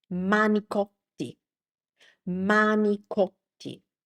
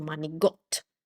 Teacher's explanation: This Italian C, manicotti, turned into a G, manicot. manigot And also, the ending vowel got lost completely. So, instead of manicotti, it turned into manigot.